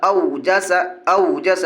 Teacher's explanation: वावलीन को नरम आवाज़ के साथ जल्दी पढ़ेंगे।